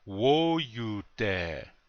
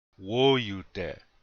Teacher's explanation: You hear that the accent's on the first syllable.